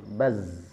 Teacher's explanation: Sedangkan zai bersifat jarr dari segi nafas. Kemudian dari segi suara dia bersifat rakhawa. Sangat tipis tekanannya atau bahkan tidak ada tekanan sama sekali. Mengalir begitu saja.